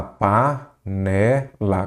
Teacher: São aquelas palavras cuja sílaba tônica é a penúltima. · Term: paroxítonas